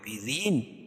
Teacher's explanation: را کے نیچے زیر ہے تو را باریک پڑھی جائے گی. اور وقف کی صورت میں یا مد عارض وقفی ہوگا، اس میں طول توسط قصر تینوں جائز ہے.